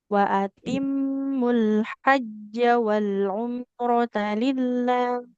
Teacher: dihajja jimnya enggak boleh panjang karena fathahnya enggak ada alif